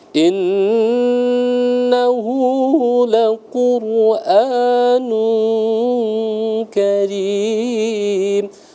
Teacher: Inna, jadi tadi gunnah musyaddadah, gunnah ya, wajib al-gunnah, jadi kita wajib membaca dengung.